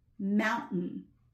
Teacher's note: I kind of shot it out my nose and I didn't even make that flappy t thing with my tongue. But that's a letter T.